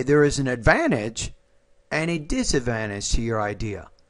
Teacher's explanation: This one, when you have two different ideas, right? You want to put rising tone on the first, falling tone on the second.